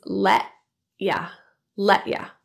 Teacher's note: The T in let is pronounced as a glottal T here, meaning rather than releasing the T with the tip of the tongue and a stop of air release, it's held in the glottis and released on the next sound, the Y in U.